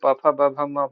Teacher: प फ ब भ म व्यंजन होते हैं तो ओठ से निकलते हैं